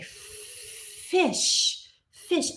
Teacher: fricative is when we have our mouth is is narrow and air is being forced out and is causing a friction